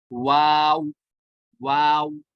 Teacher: अब वाव की बारी आ गई। वाव जो है वो दोनों होंठ की गोलाई से अदा होता है।